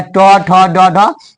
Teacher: ट ठ ड ढ ये सभी किससे उच्चारित होने वाला वर्ण है, बोलेंगे मूर्धा से उच्चारित होने वाला वर्ण है